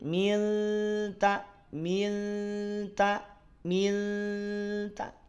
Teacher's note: Nun sukunnya tetap masih terasa tetap masih terdengar hanya saja sudah agak bergeser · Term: Ikhfa